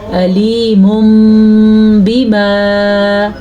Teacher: اگر نون ساکن یا جیسے یہ نون ساکن ہے یا تنوین کے بعد با آ جائے تو پھر نون ساکن یا تنوین کو میم میں بدل دیتے ہیں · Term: اقلاب